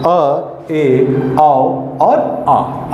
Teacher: आधा खुले हुए मुख से इनका उच्चारण होता है। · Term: अर्ध निवृत्त